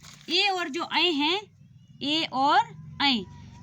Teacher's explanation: इनमें गले और हमारे मुख के ऊपरी भाग का उपयोग होता है, गले से और तालु से इनका स्वर निकलता है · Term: कंठ तालु